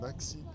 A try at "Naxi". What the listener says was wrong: Nashi. Ah, t'as dit à la française. Ça se dit Nashi.